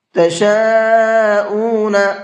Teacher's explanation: بڑا مد ہے، 4 سے 5 الف کی برابر کھینچ کر کے پڑھیں گے